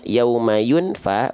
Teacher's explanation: di sini ada huruf Fa maka bunyiannya yang asalnya Yauma yunfa bunyiannya yang asalnya jelas kita samarkan dan dengung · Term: ikhfa